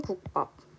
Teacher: 앞에 있는 받침 기역 때문에 뒤에 있는 비읍이 쌍비읍으로 발음이 나고 있습니다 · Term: 된소리 대기